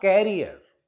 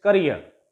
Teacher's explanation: This is a disyllabic word, career, and it ends in ear, E-E-R. It ends in ear, so the stress will take place on the last syllable, and it is not carrier, it's career.